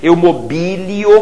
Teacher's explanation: Eu mobilio, com acento no i, nesse primeiro i.